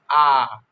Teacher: जैसे मानिए हम लोग उच्चारण करते हैं आ, पूरा मुंह खुल रहा है ना, तो इसमें विवृत में आपका होता है पूरा मुंह खुलता है, पूरी तरह से मुंह खुल जाता है, जिसके उच्चारण में पूरा मुख खुलता है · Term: विवृत स्वर